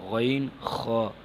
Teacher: غین خا یہ حلق کے اوپر والے حصے سے ادا ہوتے ہیں، تو ان کو حلق کے اوپر والے حصے سے ہی ادا کرنا ہے، جیسے غین خا۔